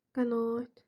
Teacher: A uzanır. Y artırılmır qətiyyən. Çünki a-də demişdik ki, artırılmış. · A uzanır. Y artırılmır həqiqətən.